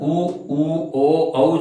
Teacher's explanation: उ, ओ, औ जिन स्वरों के उच्चारण में होठ गोल हो जाते हैं। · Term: वृत्तमुखी